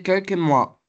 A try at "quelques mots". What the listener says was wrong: Quelques mots. C'est quelques mots, c'est pas quelques mois.